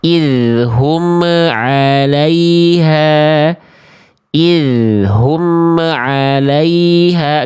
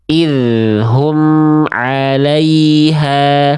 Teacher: Jadi bunyi amnya itu dilepas makhrajnya sesaat abang kakak, ayah bunda, sesaat sebelum melafalkan huruf setelahnya. Baru lepas sambil lafalkan huruf berikutnya. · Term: idhar syafawi